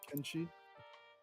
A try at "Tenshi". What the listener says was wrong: With a T, yeah. Tenshi, I believe.